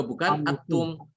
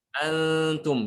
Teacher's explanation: Membaca ikhfa itu dia itu ujung lidah tidak ditempelkan pada langit-langit mulut ya.